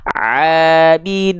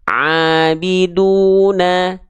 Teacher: Yang kedua adalah jangan sampai suaranya masuk ke dalam rongga hidung sehingga suaranya sengau, berdengung